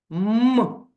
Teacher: при вимові цього звука видихуване повітря зустрічає перешкоди а саме губи так вони змикаються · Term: приголосний